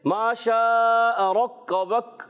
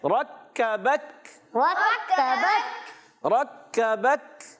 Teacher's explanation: را کو پر رکھنا ہے، کاف کو باریک رکھنا ہے، اگلے کاف کو بھی باریک۔